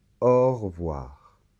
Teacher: les dents qui touche la lèvre inférieure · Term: la lettre v